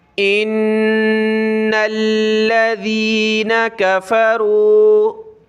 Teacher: لام کے اوپر یہ تشدید ہے تو لام کو بھی ہم نے جمانا ہے، سختی کے ساتھ پڑھنا ہے